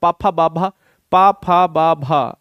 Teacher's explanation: दोनों ओठों के द्वारा श्वास का अवरोध होता है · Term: ओठी व्यंजन